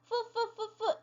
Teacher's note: 치아와 아랫 입술이 이렇게 마찰하면서 소리가 나요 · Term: F 발음